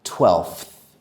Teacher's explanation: It is hard because we have an F sound that is immediately followed by a TH sound.